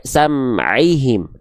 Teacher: Huruf ain dilafalkan dari bagian tengah tenggorokan. Itu yang disebut dengan wastul halqi.